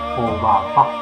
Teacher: Sin embargo, al colocarle una tilde cambia su significado. Esa Obapa, como no lleva acento en esta parte, se pronuncia más fuerte la última sílaba